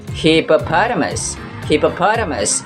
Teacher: Using American English pronunciation, we're putting the stresses on the first and third syllables.